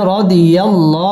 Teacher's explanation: আল্লাহ শব্দের লাম পুর হবে